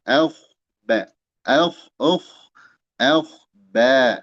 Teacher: huruf ba yang tipis jangan terpengaruhi oleh k tersebut